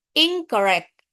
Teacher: Kemudian in berubah menjadi ir ketika bertemu dengan bunyi-bunyian r seperti irregular. Kemudian prefix in berubah menjadi ing sebelum bunyi-bunyian velar seperti bunyi keh sama geh